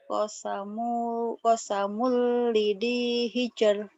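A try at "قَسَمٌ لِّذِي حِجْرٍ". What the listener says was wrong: Nah bagus.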